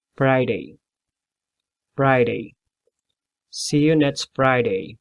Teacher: you have to use your lower lip and upper teeth